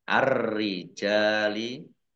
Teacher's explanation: alif lam samsiah karena tidak dibaca, langsung masuk ke huruf berikutnya yaitu ro, ditandai ro-nya ada tasdidnya. Ar-rijali, ro-nya dibaca double.